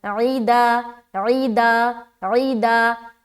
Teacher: हरूफ़े हलकी में से एक है आइन, तो हलक से निकालना है